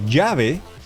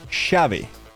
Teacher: Argentinians do not pronounce those consonant or that consonant and the semicconsonant as the J. They pronounce it as sh. So they wouldn't say jave, they would say shave linguistically.